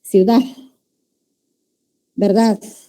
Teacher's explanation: Ya se escucha un sonidito que en realidad no es una D, sino ya es como si fuera una S. O sea, se va dejando de utilizar la D.